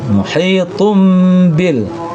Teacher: Ya, tun ini barisnya dua disebut dengan tanwin. Sesudahnya ada ba makanya tun itu menjadi bacanya tum.